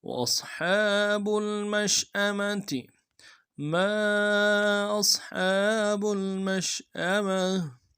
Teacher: میم کو شین کے ساتھ ملانا ہے، شین کو واضح کریں گے، تفشی ہے۔ حمزہ کو نرم سے ادا کریں گے، اگلے میم کو نرم سے ادا کریں گے، تا کو نرم سے ادا کریں گے۔